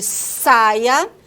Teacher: Nós temos o Sá, né, que é a consoante fricativa alveolar não vozeada, como no som de saia